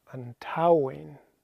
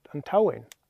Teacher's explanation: the T takes over the sound of the s · T takes over the sound of the S when they're arranged like this. T hyphen S, the T sound takes over